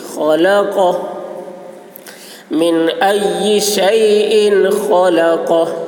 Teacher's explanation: خا کی آواز موٹی ہوگی، قاف کی آواز بھی موٹی ہوگی